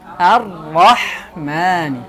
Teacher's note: cukup dengan 1 atau 2 kali bergetar